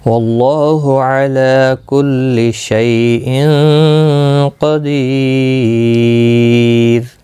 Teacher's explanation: اخفا حقیقی ہوگا، غنہ کے ساتھ پڑھیں گے، قاف مستعلیہ ہے، پر پڑھا جائے گا، دی یا مدہ ہے، ایک الف کی مقدار کے برابر کھینچ کر پڑھا جائے گا، اور را ساکن پڑھا جائے گا وقف کی صورت میں، باریک بھی پڑھا جائے گا را ساکن سے پہلے یا ساکن کی وجہ سے۔